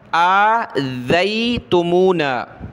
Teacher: ذال پر زبان نکالا، زبان نکال کے اس کو نرمی کے ساتھ پڑھا